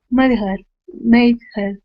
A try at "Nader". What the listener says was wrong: Try it with no H. Nader.